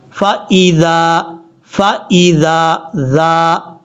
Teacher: زبان کا سرا اوپر والے جو دو دانت ہیں ان کے اندرونی کنارے سے لگے گا تو ذال پڑھا جائے گا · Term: ذال کا مخرج